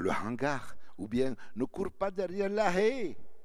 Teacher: tu as l'accent qui prononce le H